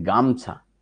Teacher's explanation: শব্দ ছিল গা মোছা এটিকে শ্বাসাঘাতের জন্য হয়ে গেছে গামছা অর্থাৎ শব্দের প্রথমে একটা শ্বাসাঘাত পড়েছে